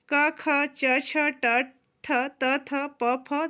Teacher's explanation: जिन स्वर तंत्रियों में कंपन या झंकृत नहीं उत्पन्न होती उन्हें अघोष व्यंजन कहते हैं